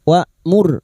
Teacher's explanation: Hamzah sifatnya jahar dan sidah, tertahannya nafas dan suara. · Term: hamzah sukun